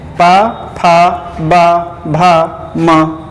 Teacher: अगला जो पा वर्ग है उसमें व्यंजन है पा, फा, बा, भा, मा, और इसका जो उच्चारण स्थान है वो क्या है, ओष्ठ